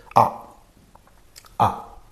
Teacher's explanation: the tongue is positioned in the center of the mouth